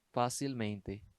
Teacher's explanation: Separando em sílabas, vai dar uma quarta sílaba. Aqui se considera duas sílabas tônicas, fá e men. Mas, para classificar, leva-se em consideração o acento do fá, que é uma herança.